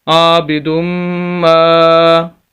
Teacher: 2 مرتبہ میم پڑھا جائے گا اور یہاں پر غنہ بھی ہوگا، جہاں بھی میم مشدد آئے گا غنہ ہوگا۔